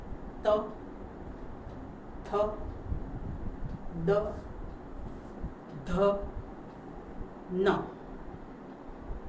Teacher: દાંતની પાછળ તમારી જીભ અડે છે ટચ થાય છે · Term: ત વર્ગ